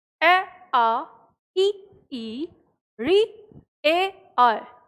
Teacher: तो जब आप इनका उच्चारण करते हैं तो आपको अपने आप ये चीज़ समझ में आती है कि हमारे होठ जो हैं वो फैले हुए होते हैं, गोलाकार नहीं होते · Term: आवृतमुखी